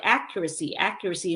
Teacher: stress now is um on the first syllable